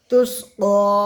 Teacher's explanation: তুস্কা খাড়া যাবার আলিফ মাদ্দার সমতুল্য এক আলিফ টান দিয়ে পড়বো